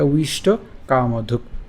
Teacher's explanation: অন্তস্থ ব এটা উচ্চারণ হচ্ছে উও, উওর সাথে রসিকের উচ্চারণ করে ফেললে হবে উই